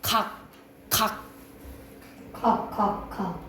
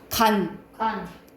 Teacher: 원래 기억은 안 울림 소리 니은 울림 소리 이렇게 생각을 하시면 돼요